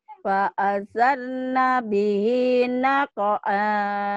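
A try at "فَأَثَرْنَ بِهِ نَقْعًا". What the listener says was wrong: Jadi kalau udah enggak ada hentakannya udah bagus banget ya. Itu. Jadi masih ada. Jangan digitu-gitu ya. Fa'asar tuh.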